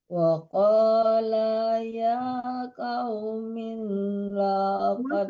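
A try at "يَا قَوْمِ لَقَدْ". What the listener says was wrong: Kenapa min dibaca Ibu? Ibu diperhatikanlah mi bukan min ya, tapi jangan tertahan di mi-nya.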